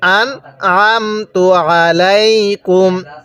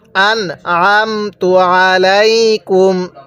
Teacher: দেখুন আমি কিন্তু আইনটা পড়ার সময় গলার মধ্যে চাপ দিয়ে পড়ছি